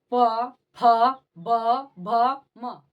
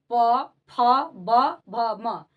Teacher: तो इसमें जो है ओस्ट आपस में सट रहे हैं प फ ब भ म इसका उच्चारण जो है ओट से · तो इसका जो उच्चारण हो रहा है, आप लोग उच्चारण किए तो आप लोग क्या देखें कि जो प, फ, ब, भ, म बोल रहे हैं, तो इसमें जो है ओष्ठ आपस में सट रहे हैं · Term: प वर्ग, पवर्ग